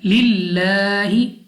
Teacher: लाम ऑफ अल्लाह से पहले लाम के नीचे जेर है, तो हमने इस लाम ऑफ अल्लाह को बारीक पढ़ना है, यानी अपनी आवाज को बारीक रखना है